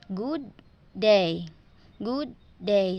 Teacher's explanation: So, the good is the normal tone and the day is rise. Then it will create a wave tone like good day. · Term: Rising falling intonation, slide or inflection